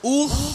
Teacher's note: খ মোটা হরফ খ উচ্চারণের সময় জিহ্বার গোড়া উপরে চলে যাবে